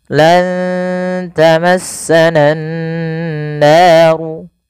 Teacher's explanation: Kemudian pada lafal nan naru, usahakan kita menahan bunyi suara nunnya karena pada lafal ini ada bacaan gunnah, yaitu dengan menahan suara nun dan memasukkan ke rongga hidung kita